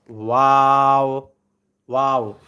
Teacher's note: দুই ঠোঁট গোল করে সামান্য খোলা রেখে উচ্চারিত হয় ওয়াও, ওয়াও। দুই ঠোঁট গোল করে সামান্য খোলা রেখে, তাহলে ঠোঁটের দিকে তাকাইলে আপনি বলতে পারবেন।